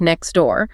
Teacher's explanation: Very often the t sound at the end of next gets dropped especially before the die of door.